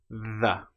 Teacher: The sound is made by putting your tongue either between your teeth or very close behind with a slight gap. The. And then we let our vocal cords engage, we push the air through, the. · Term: voiced, voiced version